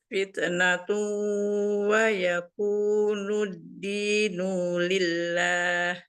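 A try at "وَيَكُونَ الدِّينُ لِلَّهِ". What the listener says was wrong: Wa yakuna. Nah, bukan nu. Wa yakuna dinu lillah.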